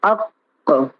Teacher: جیسے حمزہ قاف زبر اق، تو اب قاف کا مخرج ہے، جڑ زبان تالو سے مل کر قاف ادا ہوتا ہے، تو جیسے ہم نے کہا اق، تو اق کے بعد جو آواز پلٹ رہی ہے قاف کی، وہ آواز پھر اسی جگہ پہ تمام ہو جا رہی ہے جہاں سے وہ نکل رہی ہے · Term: محقق